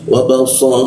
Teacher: huruf so ya di belakang gigi, posisinya so, lidahnya agak dilengkungkan sehingga rongga udara itu agak tertutup sehingga aliran udara agak terganggu